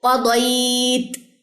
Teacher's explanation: تو اکثر لوگ پوچھ رہے ہوتے ہیں کہ یہ آپ کی لاسٹ پہ کی آواز کیوں آ رہی، کیونکہ آپ نے تا کا جو اس کا ہمس ہے یا تا کی جو ساؤنڈ ہے وہ واضح کرنی ہے